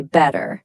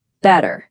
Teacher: An American will often say better, but in Indian English, you'll hear both of those T's pop. · in Indian English, you'll hear both of those T's pop, better. Once you start listening for that clear, sharp T, you'll start noticing it absolutely everywhere.